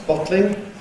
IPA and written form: ˈbɒtlɪŋ (bottling)